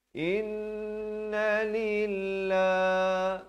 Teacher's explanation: Lafz jalalah dibaca nipis 2 harakat.